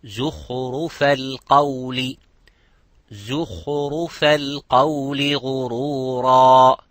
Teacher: Zay also here is close to the kha. The kha is mufakham, ra is mufakham, but the zay is muraqqaq.